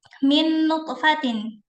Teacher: cara membacanya itu mengidghamkan atau memasukkan ke dalam huruf berikutnya dengan tempo dengan tempoh ghunah atau dengung yang dipanjangkan. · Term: idgham bighunah